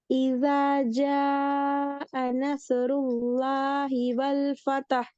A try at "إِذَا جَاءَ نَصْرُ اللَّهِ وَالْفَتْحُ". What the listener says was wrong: உல் ஃபதஹ் பிழை. பாத்தீங்களா? அது கலக்கப்படுதே. ஃபதஹ் எப்படி வரணும்? வல் ஃபத்ஹ். ஆ, பிழையே. வல் ஃபதஹ்ன்ற பிழையே. வல் ஃபத்ஹ். எஸ். வல் ஃபத்ஹ்.